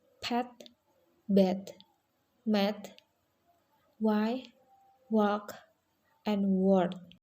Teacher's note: These are sounds formed using both upper and lower lips. They are represented by the symbol p, which is voiceless, b, m, and w, which are voice. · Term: bilabials